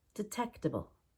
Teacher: so we make the D really quick